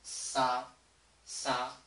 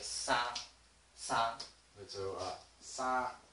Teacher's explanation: sa is the highest one, and the length is is longer than the next one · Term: first tone